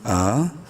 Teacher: میم الف مد زبر ما، تین الف کے برابر میم کو لمبا کریں گے، مد کریں گے، حمزہ کھڑی زبر آ، کھڑی زبر کی وجہ سے حمزہ کو ایک الف کے برابر لمبا کریں گے